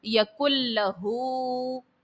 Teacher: نون ساکن کے بعد لام ہے اور نون ساکن کے بعد لام جو ہے یہ حرف یرملون کا ہے اور لام جب آئے تو ادغام بلا غنہ ہوتا ہے، یہاں پر ادغام کا قاعدہ تو لگے گا لیکن غنہ نہیں کریں گے